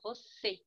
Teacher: E na palavra você, a letra E pronuncia-se mais fechada.